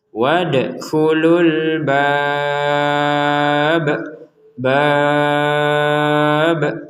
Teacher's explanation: Jika kita berhenti, maka huruf ba-nya ini menjadi sukun. Dan ketika huruf ba-nya menjadi sukun, kedudukannya sama dengan dal, dipantulkan juga.